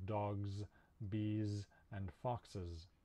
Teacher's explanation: we actually pronounce them with a zed sound in english also plurals like when there's more than one of something we use the s in the spelling but many of them have a zed sound · These are all spelled with S, but we actually pronounce them with a Z sound in English.